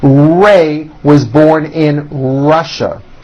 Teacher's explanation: Notice how my lips come forward on all my R's and W's. Try to do the same thing.